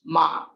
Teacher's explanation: ma with grave pitch, ma becomes horse